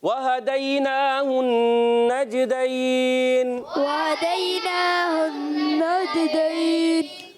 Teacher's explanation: حرف لین کے بعد سکون عارض آ رہا ہے, مد لین عارض ہے